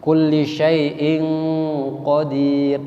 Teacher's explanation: Hukum bacanya ikhfa, samar-samar dan didengungkan.